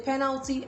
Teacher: pronounced penalty as i said and not finality or penalty penalty the stress is on the first syllable